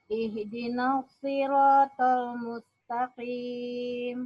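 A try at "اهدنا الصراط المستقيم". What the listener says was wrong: Ingat ihdina nggak boleh dipisah. Jatuh dia bacanya. Ihdina, tidak ada celah Bu ya.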